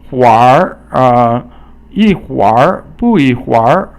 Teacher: 会 is a fourth tone, But here, because you have the arhua, it sounds like third tone almost